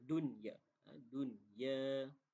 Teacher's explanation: Fil haya, haya itu adalah mad asli, dan dunya itu adalah izhar mutlak. Bila izhar mutlak kita sebut secara tanpa ada dengung